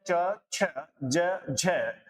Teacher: यहां पर देखना, ऑप्शन बी कह रहा है च, छ, ज, झ, ये जो वर्ण होते हैं दोस्तों, ये आपके तालव्य वर्ण होते हैं, तालु से उच्चारित होते हैं। जब इनका उच्चारण आप करते हैं तो आपकी जिह्वा सीधा तालु को टच करती है, तालु को स्पर्श करती है।